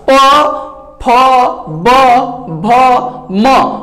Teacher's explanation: सब में ओष्ठ सटना जरूरी है, और बिना उसके ओट्स के स्पर्श हुए आप इसका उच्चारण कर ही नहीं सकते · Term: प वर्ग